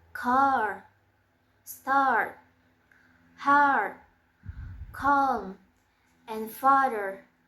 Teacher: place of articulation is open back and manner of articulation is long forward for example car start calm and father.